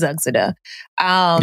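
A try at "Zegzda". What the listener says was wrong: You messed it up. silent there. Something you pronounced every single letter. Something silent there. Zugzda. It's something silent there. Yeah, something silent.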